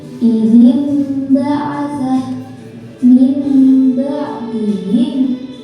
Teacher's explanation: Cara membacanya, suara nun mati atau tanwin diganti dengan suara mim. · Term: Iqlab